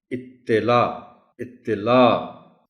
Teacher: اطلاع، تو کے نیچے زیر ہے اور اوپر شد ہے، عام طور پر اسے اطلاع کر کے پڑھا جاتا ہے، یعنی تو پر جزم استعمال کرتے ہوئے لوگ اسے پڑھ جاتے ہیں۔ تو کو شد کے ساتھ نمایاں کر کے زور دے کر پڑھا جانا چاہیے · لا کو بھی ذرا تھوڑا سا لمبا کریں گے تو تبھی اس میں عین کی آواز شامل ہوگی